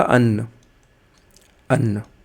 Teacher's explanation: पहला व्यंजन स्वर रहित है दूसरा व्यंजन स्वर सहित है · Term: द्वित्व व्यंजन